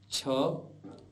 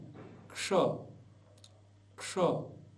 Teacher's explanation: अब हम संयुक्त अक्षरों का अभ्यास करेंगे, जिनमें सर्वप्रथम आधे क और आधा मूर्धन्य श, आधा क और आधा मूर्धन्य श, दोनों को मिलकर के बनता है क्ष।